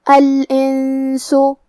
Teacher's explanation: کلمت الانسو میں یہاں نون ساکن ہے پھر حرف السین ہے کیونکہ سین بھی حروف الاخفاء میں سے ہے تو ہم یہ حکم کو غنہ کے ساتھ ادا کریں گے